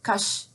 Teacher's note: the very first syllable here ends in a consonant and therefore is counted as heavy even though the vowel in this syllable is short